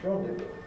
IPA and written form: ˈrɒndɪvuː (rendezvous)